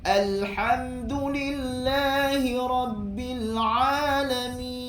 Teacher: huruf mim dan nun merupakan huruf gunnah. maka di sini ada sedikit unsur hidung di sini.